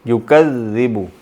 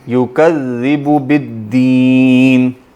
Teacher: زال جو ہے اس پہ شد بھی آئے گی تب بھی وہ باریک ہی رہے گا